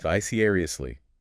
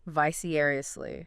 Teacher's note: Another five syllable word. Stress on the second syllable.